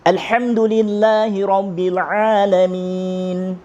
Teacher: Nun tu kena dengung sebab dia huruf dengung. Maka kena keluar angin ke hidung.